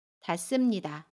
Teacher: 동사 닿다에 습니다가 결합한 닿습니다는 닿습니다 라고 발음해요. 받침 디귿은 그대로 발음하고요. 습은 씀으로 발음합니다.